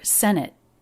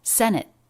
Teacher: this t is a stop t she doesn't release the escape of air senate it's an abrupt stop of error if i said that